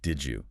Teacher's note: Did you almost always becomes did you. The D and the Y blend to make a J sound. It's just easier and faster to say. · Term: assimilation